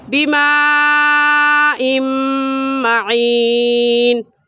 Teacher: ادغام کہتے ہیں کہ دو لفظوں کو ایک کر دیا جائے، جیسا کہ میم دیکھنے میں ایک ہے اور پڑھنے میں 2 مرتبہ پڑھا جائے گا، ایک مرتبہ حمزہ کے ساتھ ملا کر اور دوسری مرتبہ خود